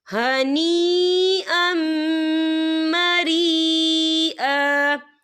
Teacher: نفسن فقلوہ ہنیئا مریئا، یا دیکھیں ہنیئا مریئا، یہاں دونوں جگہوں پہ یا مدہ ہو رہا ہے، یا ساکن ہے، یا ساکن سے پہلے زیر ہے، اور اس پر مد بھی ہے، اور یہ مد جو ہے مد متصل ہے، اس کی مقدار 4 حرکت کے برابر ہے، تو ہم اسے 4 حرکت کے برابر کھینچ کے پڑھیں گے.